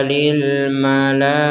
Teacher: namanya tak marbutah ini, kita mengucapkannya dengan huruf H. Jadi bukan huruf tak lagi.